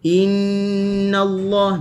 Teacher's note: dengun yang panjang ataupun disebut juga sebagai dengun dua harakat lah. Dan masuk ke kalimah Allah dengan bagi atas, maka kalimah Allah dibaca dengan tebal.